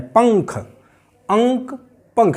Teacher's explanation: आ के बाद और का से पहले ङ की आवाज़ निकल रही है